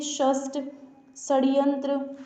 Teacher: जब आप इस स का उच्चारण करते हैं तो आपकी जीभ क्या मूर्धा को स्पर्श करती है, यानी कि ये आपका मुख है, ये आपका जीभ है, तो ये यहाँ पर आपकी जीभ यहाँ इस वाले पार्ट को स्पर्श करती है, इसलिए इसे क्या कहते हैं? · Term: मूर्धन्य व्यंजन